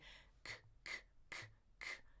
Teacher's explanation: Is there voicing there? No, it's not a G. It's a K. K- tongue in the back.